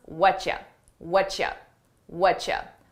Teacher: What are you becomes what ya? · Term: connected phrases